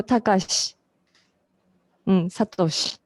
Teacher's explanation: She sound has I, but I is not strongly pronounced.